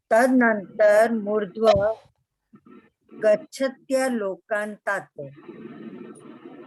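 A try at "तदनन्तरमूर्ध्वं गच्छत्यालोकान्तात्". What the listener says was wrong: मूर्ध्वम ऊपर बिंदी है।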